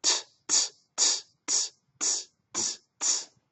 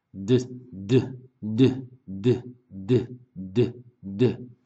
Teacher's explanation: for the T sound, that's voiceless. And for the D sound, that's voiced, which means it's moving inside your throat.